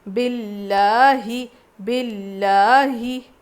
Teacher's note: لام پہ تجدید ہے تو سختی کے ساتھ پڑھیں گے اور لام کو باریک پڑھیں گے، زیر آیا ہے نا، لفظ اللہ سے پہلے زیر ہے تو باریک پڑھیں گے.